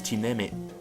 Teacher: with a glottal stop at the end